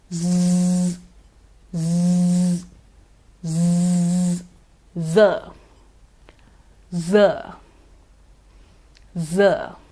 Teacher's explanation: it is a fricative a friction sound a continuous sound · There's no closure. The tip of the tongue moves close to the alveolar or the teeth ridge, but there's no closure. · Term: z sound